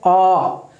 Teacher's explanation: विवृत होता है मुख का पूरा खुलना। जब हम कोई वर्ण का उच्चारण करते हैं, ठीक है जी, स्वर का उच्चारण करते हैं, उस समय मुख हमारा पूरा खुला होता है।